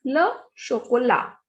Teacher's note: T is muted consonant whenever it is at the end. So the pronunciation is le chocolat, chocolate.